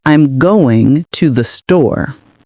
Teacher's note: Notice how native speakers often stress the words going and store.